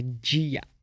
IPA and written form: d͡ʒia (dia)